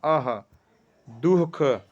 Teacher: यह भी अनुस्वार की तरह विसर्ग ही स्वर के बाद आने वाला व्यंजन है एक प्रकार का, और इसकी जो ध्वनि है ह की तरह होती है